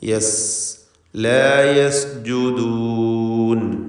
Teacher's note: യസ് എന്ന് വ്യക്തമാക്കി സീനിനുള്ള സഫീർ എന്ന സിഫത്ത് അതൊക്കെ പൂർണ്ണമായി നൽകി വ്യക്തമാക്കി ഉച്ചരിക്കണം.